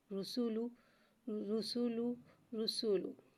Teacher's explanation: رسو لام کو ایک الف یعنی 3 مقدار کھینچ کے پڑھیں گے، اور اس بات کا خاص خیال رکھیے گا کہ ہونٹوں کو گول کر کے ادا کریں گے، کیونکہ پیش آ رہا ہے، جہاں پیش آتا ہے وہاں ہونٹوں کو گول کر کے ادا کرتے ہیں۔ · را پہ پیش آئے گا تو را کو موٹا ادا کر کے پڑھیں گے